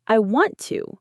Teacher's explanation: If we don't reduce it to wanna, the T at the end of want and the T at the beginning of to merge into one sound